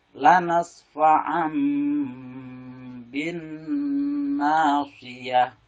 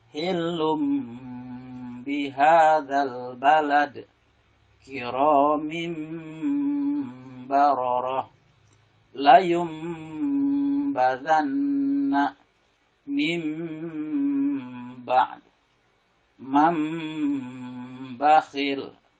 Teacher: suara nun mati diganti, ditukar menjadi suara mim dan ditambah dengan mendengung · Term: iklab